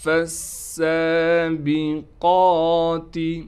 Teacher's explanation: فالسابقات، فا کو سین سے ملائیں گے، فا کے بعد جو الف ہے اس سے بھی ہم نہیں پڑھیں گے، اسلام کو بھی نہیں پڑھیں گے، ڈائریکٹ فا کو سین سے ملا دیں گے، سین میں سیٹی نکالیں گے، سین پر تشدید ہونے کی وجہ سے تھوڑا ٹھہراؤ بھی کریں گے اور کڑا زبر ہونے کی وجہ سے کھینچیں گے بھی۔